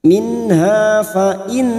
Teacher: nun yang bertasdid gunna musaddadah kita dengungkan selama 3 harokat